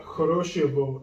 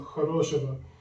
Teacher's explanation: the stress is on the second O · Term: vowel reduction